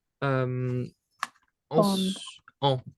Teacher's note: So it's always, if it's written this way, you wouldn't hear the N here. It just kind of becomes mute as it forms a whole with the A.